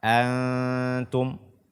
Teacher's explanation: membaca Nun atau tanwin yang setelahnya huruf k kita baca dengan samar